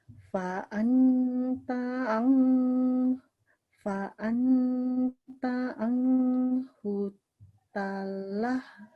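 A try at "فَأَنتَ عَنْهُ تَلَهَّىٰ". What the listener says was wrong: Nah, ini koreksi satu dari saya, anhu. Ya kalau di sini berbentuk N jelas, anhu gitu, anhu. Anta anhu talah.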